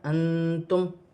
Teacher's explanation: نون ساکن میں اخفا ہوگا کیونکہ نون ساکن کے بعد حروف اخفا میں سے تا آ رہی ہے